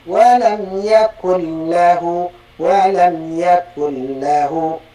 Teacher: Ini langsung idgham tidak terdengar lagi bunyi Nun dan nunad apa tanwin itu langsung kepada huruf ra dan e